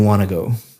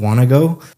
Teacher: Want to go sounds like one word, want to go, because you're connecting all the speech up.